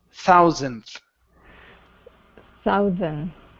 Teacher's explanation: forget about the D the D doesn't exist okay go to the N then the th thousandth thousand okay